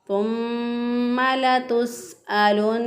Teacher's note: नून मुशद्दद पर हमेशा फिर गुन्ना करें होता है तो इसलिए यहाँ पे भी गुन्ना करेंगे। लतुस्अलुन्ना के अंदर भी नून मुशद्दद पर गुन्ना किया, एक अलिफ के बराबर नाक में नून की आवाज़ को ठहराते हुए हमने इसको अदा किया